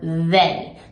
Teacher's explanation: has a little vibration and you can feel it on the back of your teeth like I can feel feel my teeth vibrating with that okay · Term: voice sound, voiced sound